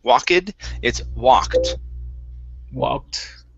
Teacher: so the ed ending here will sound like a T instead of an ed. Walked, it's walked.